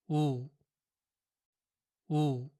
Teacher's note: And the sound of the letter U in words like June or blue is written like this in Korean. But in Korean, the sound oo is pronounced a little shorter than the English version